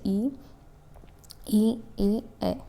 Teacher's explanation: उच्चारण में जीभ के अग्र भाग का जब इस्तेमाल हो तब उसे हम क्या कहते हैं अग्र स्वर कहेंगे